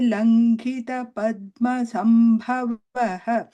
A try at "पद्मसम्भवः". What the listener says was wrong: Sambhavaha, not Sambhavaha. Sambhav, there is no pause. Sambhavaha, Padma Sambhavaha.